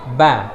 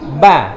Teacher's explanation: Ketika kita mengucapkan huruf ba, itu bibir atas dan bibir bawah nempel